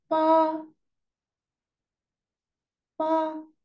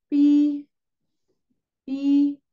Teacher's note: el tono uno era un tono sostenido